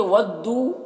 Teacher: ودو میں واو مدہ ہے، کھینچیں گے الف کے برابر